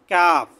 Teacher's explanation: জিহ্বার গোড়া থেকে একটু সামনে আগিয়ে কাফ। জিহ্বার গোড়া তার বরাবর উপরে তালুর সাথে লাগিয়ে কফ।